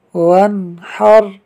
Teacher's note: نون ساکن کے بعد حا حروف حلقی میں سے ہے، لہٰذا اظہار ہوگا، یعنی نون ساکن میں غنہ نہیں ہوگا۔ یہاں واو کے بعد الف لکھنے میں ہے مگر پڑھا نہیں جائے گا۔